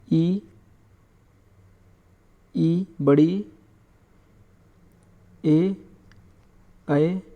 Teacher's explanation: ये होते हैं अग्रस्वर। जब इनका उच्चारण करते हैं तो हमारी जीभ का आगे का भाग क्या रहता है? सक्रिय रहता है, इसलिए इन्हें कहते हैं अग्रस्वर।